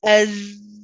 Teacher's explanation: When we say as, we continue with the sound of our voice, and that's what we're relying on because it's a letter of jahr, okay, which means that we're relying on the sound of our voice